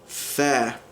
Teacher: another interdental fricative in Modern Standard Arabic, which is tha